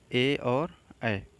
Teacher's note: ए और ऐ को बोलने में कंठ और तालु दोनों का प्रयोग होता है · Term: कंठ तालव